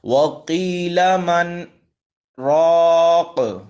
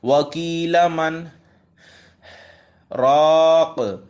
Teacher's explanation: اب دیکھیں میں نے ایک سانس میں وکیلہ سے لے کر راگ تک پڑھنا ہے، لیکن سکتہ والی جگہ پہ میں نے آواز کو روک دینا ہے، سانس بیچ میں نہیں لینی، ٹھیک ہے۔ وَقِيلَ مَنْ راق، اگر اس کو ایسے پڑھوں وَقِيلَ مَنْ راق تو یہ غلط ہو جائے گا کیونکہ سکتہ والی جگہ پہ میں نے سانس لے لی ہے، ٹھیک ہے۔